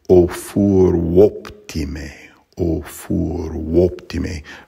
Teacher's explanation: So first of all, the first line, furum optime, that's got to be elided, but I would recommend blending the nasalized U and the O, so I would say O furum optime, O furum optime, pronouncing the U sort of as a consonant.